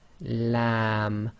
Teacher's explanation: a bit more pressure on the front of the tongue back of the tongue is as normal not it's not raised